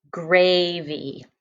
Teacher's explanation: i get to use that y again making that long e sound at the end of my syllable